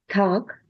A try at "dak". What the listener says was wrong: Not tak. That means to tie somebody up. Dak.